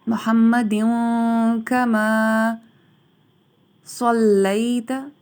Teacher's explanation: صا کی آواز کو گول کیا جائے گا سیٹی کے ساتھ